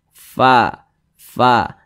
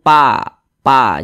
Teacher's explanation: fa fa jangan pa pa jangan tapi Fa seperti itu karena huruf Fa Ini adalah salah satu huruf yang memiliki sifat hams jadi ketika kita mengucapkan huruf Fa ada nafas yang mengalir fa